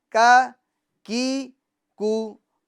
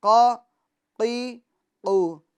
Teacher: کاف کو ہمیں باریک پڑھنا ہے اور قاف کو ہمیں پور پڑھنا ہے